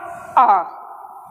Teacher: जीभ के आधार पे हम देख रहे हैं तो मध्य स्वर जिसमें हमारी जीवा का या जीभ का मध्य भाग प्रयोग होता है